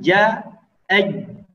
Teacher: Huruf ja ketika dalam keadaan sukun, maka ya kita tidak boleh mengeluarkan nafas, ya. Kita contohkan ja, aj, jadi dimatikan aliran nafasnya. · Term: ditahan nafasnya